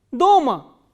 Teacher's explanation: This word we have already done, the, o, ma, a, and the stress is on o.